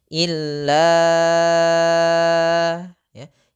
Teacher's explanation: kita hanya perlu memanjangkannya selama empat harakat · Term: mad jaiz munfasil